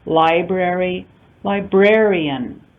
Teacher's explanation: So we talked about a type of suffix called stress-changing suffixes, IAN, ER, ITY being examples of these types of stress-changing suffixes. So we see the stress on the word library, first syllable stress, changing to second syllable stress with the addition of IAN